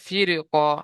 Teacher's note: র সাকিনের আগে জের এসছে, র বারিক হওয়ার কথা ছিল, হুরুফে মুস্তালিয়া কফ আসার কারণে র কে পুর করে পড়তে হবে